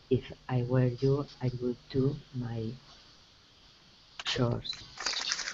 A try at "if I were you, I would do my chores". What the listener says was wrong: Nice. Good pronunciation of chores.